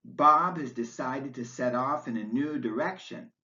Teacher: the last stressed word is direction